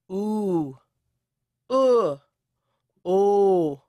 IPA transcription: u